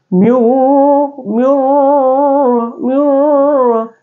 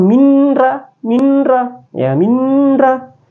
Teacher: cara membacanya itu diidghamkan tanpa digunnah, tanpa dengung, ya, tanpa dengung. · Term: idgham bila gunnah